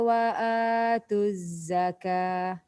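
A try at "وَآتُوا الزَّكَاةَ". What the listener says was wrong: Wa atuz zakah. Dia kena ada panjang tu sebab ada mat kan.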